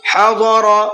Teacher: ضاد کو بھی پر کر کے پڑھنا ہے اور را کو بھی پر کر کے پڑھنا ہے